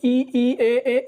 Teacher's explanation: इन सभी को बोलने में जीभ का अगला भाग जो हमारा प्रयोग में होता है उसको बोलते हैं अग्र स्वर